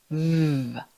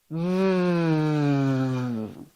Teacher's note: For the VV sound, put your top teeth gently on your bottom lip. VV. Push air out. It's a voiced sound, so your throat will vibrate. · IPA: /v/